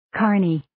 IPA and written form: 'kɝrni (Kearney)